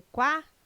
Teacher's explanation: O QU não é dígrafo, não é pronunciado com um som único. O quá traz um ditongo, dois sons UA.